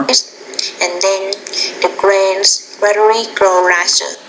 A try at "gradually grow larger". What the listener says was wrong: You want to say gradually grow larger. So you want to make sure you're pronouncing those medial consonant sounds in those words.